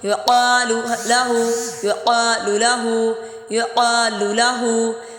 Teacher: یقال لہ، یقال لہ، دیکھیں لام کو لمبا نہیں کریں گے، یقا الف مدہ کی وجہ سے لمبا ہو رہا ہے